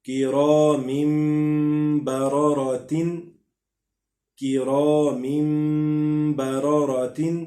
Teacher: اب یہاں پہ دیکھیں را کو ہم نے تینوں مرتبہ ہی موٹا پڑا ہے کیونکہ را کے اوپر زبر پیش، دو زبر دو پیش، کھڑا زبر الٹا پیش آئے گا، یعنی اوپر والی جتنی بھی حرکات ہیں ان میں را کو ہم نے موٹا پڑھنا ہے